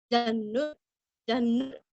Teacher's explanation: ज के ऊपर आघात, हल्का सा ह का उच्चार करके रस्व नु पढ़ना है